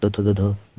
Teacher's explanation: इसका उच्चारण स्थान दंत से होता है। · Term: त वर्ग